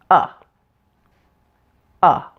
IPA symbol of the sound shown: ʌ